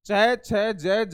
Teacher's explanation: च, छ, ज, ये इन सभी का उच्चारण करोगे तो आपके जीवा तालु से टकराएगी, तब इन व्यंजनों का उच्चारण होगा